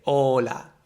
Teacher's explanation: in Spanish we don't have this dragging O, we just have O